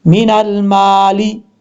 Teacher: मीम के आगे अलिफ है, एक अलिफ की मकदार लंबा करके पढ़ा जाएगा। अगर आप यहाँ पे स्टॉप करना चाहते हैं, वक्फ करना चाहते हैं, तो उस सूरत में अगर यहाँ पे आप मद्दे आरिज वक्फी करना चाहते हैं, उसकी 2.5 अलिफ के बराबर आप मिकदार कर सकते हैं, यानी लंबा उसको करके पढ़ सकते हैं।